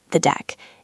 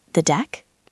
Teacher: If you say it with a flat voice like the deck, it sounds like you are confirming. It sounds like a statement. You must go up at the end.